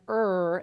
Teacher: an alveolar approximant with the tongue approaching the alveolar ridge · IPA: [r]